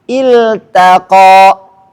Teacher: ta ketemu qaf, taknya nggak boleh tebal, harus tipis.